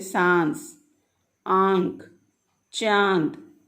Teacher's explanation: वायु मुख तथा नासिका दोनों से बाहर निकलती है। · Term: अनुनासिक